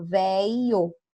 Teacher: e fala velio tá tirou esse fonema esse fonema do LH o som do LH a gente reduziu pro som do i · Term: perda de fonemas